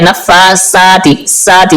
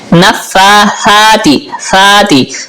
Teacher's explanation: سا جو ہے یہ زبان کا سرا اور اوپر والے دانتوں کے اندرونی کنارے سے ادا ہوتا ہے، اکثر لوگ اسے سین پڑھ دیتے ہیں، اس طرح پڑھتے ہیں نفاساتی ساتی سیٹی کے ساتھ، تو یہ غلط ہے۔